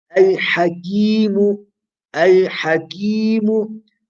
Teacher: You do a mad al-asli or mad tabi'i along the length of two haraka